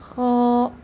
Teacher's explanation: selanjutnya adalah istila karena huruf K adalah huruf yang tebal jadi suaranya harus diarahkan ke langit-langit hingga menjadi tafkhim atau tebal seperti pada gambar ya lidahnya itu cekung Nah itu menandakan kalau